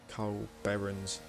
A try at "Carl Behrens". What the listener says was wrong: Behrens, actually. It's not Cole Behrens, it's Carl. And you have to say it really nasally, so you have to say Carl.